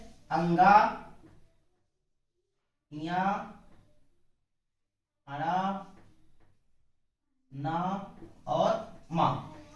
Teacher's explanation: इनमें हवा जो है मुख के साथ साथ नासारंध्र से भी बाहर निकलती है। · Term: नासिक व्यंजन